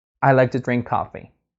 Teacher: you stress the most important words i drink and coffee